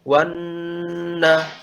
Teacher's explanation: Otomatis nunnya ditasydidkan, nanti muncul gunnah 2 harokat. Lam syamsiyah mudghamah fin nunil maftuhah bi gunnah harokatain.